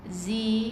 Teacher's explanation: Jadi dia baca dengan tebal huruf zai, rapatkan gigi